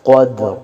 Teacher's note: قوف کو موٹا پڑھیں گے، حروف مستعلیہ میں سے ہے، موٹے حروف میں سے ہے قدر، اور دال پہ قلقلہ ہوگا، آواز کو ظاہر کریں گے قدر قدر، اور را کو بھی موٹا پڑھیں گے قدر۔